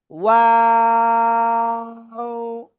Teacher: দুই ঠোঁট শুরুতে গোল হবে, শেষেও দুই ঠোঁট গোল হবে, আর মাঝখানে দুই ঠোঁট প্রসারিত হবে। ওয়াও। এই অক্ষরটা তিন আলিফটা নিয়ে উচ্চারণ করতে হবে।